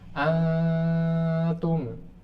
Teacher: Makhraj ta itu di mana ujung lidah ketemu dengan tempat tumbuh gigi seri atas, sehingga saat dengung itu posisi lidah sudah di situ. Antum, jadi dengung itu di sini, samar itu di sini di dekat gigi seri atas. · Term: ikhfa